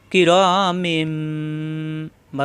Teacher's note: দেওয়া থাকবে না দেওয়া না থাকলেও আমরা এই বা থাকার কারণে নুন সাকিন এবং তানবিন কে মিম দ্বরে পরিবর্তন করে গুণ করে পড়বো